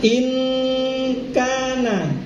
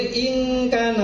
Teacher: Membacanya adalah in gitu aja, jangan ing salah. In kana. Gak boleh ing kana salah. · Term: ikhfa-nya kaf